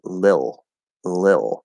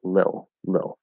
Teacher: But little, for example, can be reduced to lil, lil. So in that case, we're dropping that flap and we're just going l, eh, ol.